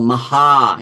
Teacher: long vowel like for example Maha yeah like Maha Mantra so that ha will be Guru because it has a long vowel